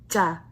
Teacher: air come out of your mouth however whenever you do ja it's aspirated you should feel the tuft of air come out